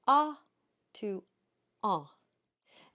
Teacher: a and then you drop the soft pallet ever so slightly air goes through the nose and you get the a sound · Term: nasal vowel